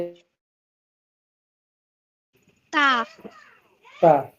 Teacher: জিহ্বার আগা সামনের উপরের দুই দাঁতের গোড়ার সাথে লাগাইয়া তা উচ্চারিত হয়।